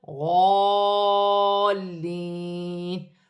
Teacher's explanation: اس کے ہجے کا طریقہ یہ ہے، غاد الف لام زبر غال، لام یا زیر لی، غالی، نون زبرنا، غالین، وقفاً غالین۔ وقف کی صورت میں زبر گر جائے گی اور نون ساکن ہو جائے گی